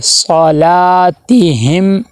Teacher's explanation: آگے پھر ہا میم زیر ہم، میم آ گیا ہے اور میم کے اوپر جزم ہے، ساکن ہے میم، تو یہاں پہ اظہار شفوی ہوگا، یعنی میم کی آواز کو ناک میں نہیں لے کے جائیں گے، غنہ نہیں کریں گے بلکہ ظاہر کر کے پڑھیں گے